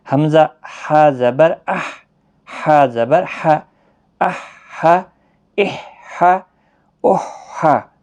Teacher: وسط حلق، درمیان حلق سے نکلتا ہے یہ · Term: وسط حلق والا ہا